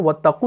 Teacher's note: حمزۃ الوصل جب بیچ میں آئے گا تو یہ ڈراپ ہو جائے گا. واو اور تا کے بیچ میں آ گیا تو ڈراپ ہو گیا.